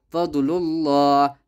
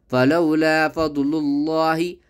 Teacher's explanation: یہاں لفظ اللہ کے نام سے پہلے پیش آ رہا ہے تو لفظ اللہ کے نام کو پر پڑھا کریں